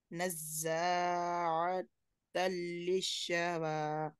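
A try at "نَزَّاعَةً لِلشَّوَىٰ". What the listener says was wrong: हाँ, परफेक्ट।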